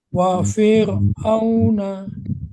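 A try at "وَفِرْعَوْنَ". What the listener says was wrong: V-nya jangan panjang. Wa fir'auna.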